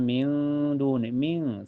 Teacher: Karena ada nun sukun ketemu dal. Cara bacanya nun sukunnya disamarkan ke dal dan ditahan sampai terasa ke hidung. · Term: ikhfa hakiki